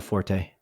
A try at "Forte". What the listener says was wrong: You gotta accentuate the E.